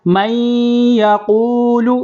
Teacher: یہاں پر تشدید ہے یا کے اوپر، تو میں یہاں پر غنہ کریں گے ایک الف